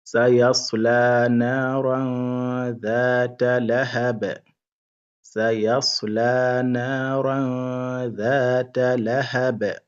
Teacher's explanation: on ne dit pas naran clairement, mais là c'est ikhfa. Donc on fait ce qu'on appelle al-ikhfa, c'est-à-dire il faut prolonger un peu et faire un peu de ghunna.